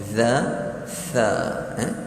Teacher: makhrajnya adalah hujung lidah kita bertemu dengan hujung gigi hadapan kita, sama dengan za tadi.